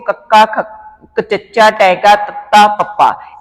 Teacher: ਅਸੀਂ ਬਹੁਤ ਸੌਖੇ ਤਰੀਕੇ ਨਾਲ ਸਮਝ ਸਕਦੇ ਆਂ ਅਨਾਦੀ ਧੁਨੀਆਂ ਨੇ ਜਿਨਾਂ ਨੂੰ ਉਚਾਰਨ ਕਰਨ ਸਮੇਂ ਸੁਰਤੰਦਾਂ ਦੇ ਵਿੱਚ ਕੰਬਾਹਟ ਪੈਦਾ ਨਹੀਂ ਹੁੰਦੀ